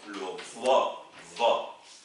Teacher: Et ne confondez pas le dad, où la langue ne sort pas, dad, et le va, qui est une interdentale, c'est-à-dire bout de langue entre les dents. Le va.